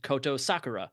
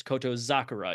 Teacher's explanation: you kind of soften that s into a z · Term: rendaku